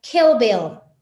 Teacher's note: esta I se tiene que pronunciar entre la I y la E. Y suena muy diferente.